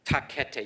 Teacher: You can feel the puff of air after each one. · every time you say a t or a k your, you actually stop, your tongue stops the sound from coming out, your air pressure builds up behind the tongue, you drop your tongue and the air spikes out and you can see the spikes in the wave forms there.